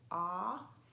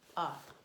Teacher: short o has a more open mouth ah and short you has the more closed mouth like ah